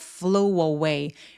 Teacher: 여기서 flue 하면서 우 소리로 끝나죠. 우 입술 쭉 내밀고 우로 끝났는데 그 뒤에 모음이 따라온다. · A 앞에 W가 있는 것처럼 fow away라고 연결해 주셔야 돼요.